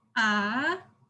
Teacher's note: the second tone is rising